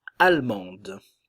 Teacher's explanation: au féminin le D se prononce nous avons encore le son en mais le D se prononce